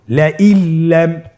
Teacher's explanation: নুন সাকিনকে আমাদেরকে পরবর্তী হরফের সাথে মিলিয়ে গুণা ছাড়া পড়তে হবে